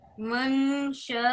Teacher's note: शा को लंबा और करो बेटा 5-6 सेकंड